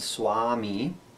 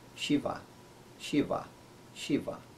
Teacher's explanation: very much like english and va is a little bit softer it's somewhere between an english w and an english v sound and some it's never as hard as v in english but